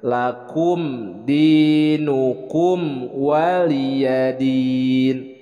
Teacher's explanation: Di sini lakum bukan qaf, dibacanya kaf.